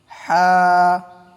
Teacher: হা কণ্ঠনালীর মাঝখান থেকে গরম শ্বাস বের হবে এবং বাংলা আকার উচ্চারণ হবে।